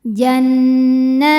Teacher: Karena ada tanwin kasroh menghadapi huruf ta, maka tanwinnya dibunyikan samar-samar, siap-siap menuju ta disertai bunyi dengung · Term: ikhfa aqrab